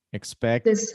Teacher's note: it ends with the t sound and then it has the id after